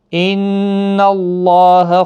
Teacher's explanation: نون مشدد پر غنہ ہوگا، اللہ کا لام اس زبر کی وجہ سے پر پڑھا جائے گا، اس کے اوپر کھڑی زبر بھی ہے، 1 الف کی مقدار کے برابر کھینچ کر بھی پڑھیں گے۔